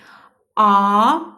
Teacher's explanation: A deyərkən dilimiz geriyə gedir. Deməli qalındır.